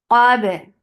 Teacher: Qab for fatha open jaws attached ba. Qaf is heavy but not ba. Ba should be light and it will get qalqala.